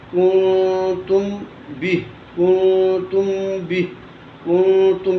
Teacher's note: میم ساکن کے بعد با آ جائے تو وہاں اخفائے شفوی کا غنہ ہوگا